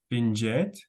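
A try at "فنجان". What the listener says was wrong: Finjan with N last.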